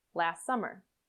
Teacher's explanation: The T can disappear completely, so that you link the S in last and the first S of summer together, last summer. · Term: elision